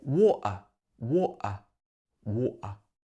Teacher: in some informal speech in the uk some people will also use a glottal stop here